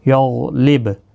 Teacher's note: غین مستعلیہ ہے، پر پڑھا جائے گا، اس کو ہلانا نہیں، اس پر قلقلہ نہیں ہونا چاہیے، با ساکن پر قلقلہ ہوگا، کیونکہ حروف قلقلہ 5 ہیں، قاف، تا، با، جیم اور دال، 3 تو اس کے اندر ہی آ رہے ہیں۔